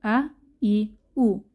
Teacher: কণ্ঠনালী শুরু থেকে হামজাহ এবং হা উচ্চারিত হয়।